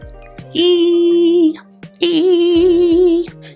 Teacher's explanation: When you make the long E sound, your tongue will arch up higher than in any other sound in English, making a very steep slide.